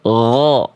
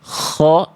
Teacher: Ghain ini kalau dia dilafalkan dengan nafas, yang asalnya ghaw, kita aliri pakai nafas kho, itu sudah berubah menjadi huruf kho. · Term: huruf ghain